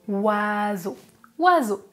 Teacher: Non, mais O plus I, c'est une combinaison et on prononce WA. Est-ce que l'on prononce le son S? Non, on prononce Z. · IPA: [z]